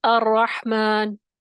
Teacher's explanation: جب اس کو ادا کرتے ہیں، را کو ادا کرتے ہیں، تو آواز میں ہلکی سی کپ کپی پائی جاتی ہے. وہ جو کپ کپی ہے نا، لرزہ، وہ ایک اس طریقے سے ریپیٹ ہوتا ہے ایک دم سے کہ وہ اس کی وجہ سے تکرار محسوس ہوتی ہے. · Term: صفت تقریر